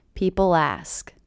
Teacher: there's no punctuation in between a lot of people ask and I do hear that L as really linking to the beginning vowel sound